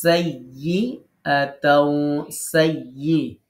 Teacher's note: ইয়া জিবার মাঝখানে শক্ত হবে